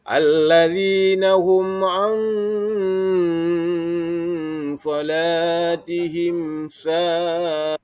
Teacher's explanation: ada nun mati bertemu dengan huruf sad. Jadi pada bacaan tersebut terdapat hukum bacaan ikhfa. Huruf sad termasuk ke dalam huruf ikhfa.